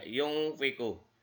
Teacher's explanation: ini dibaca dengung. Ya, yungfiku. Ada huruf nun mati. Yungfiku. Nun mati bertemu dengan huruf fa, di mana huruf fa ini merupakan salah satu huruf ikhfa.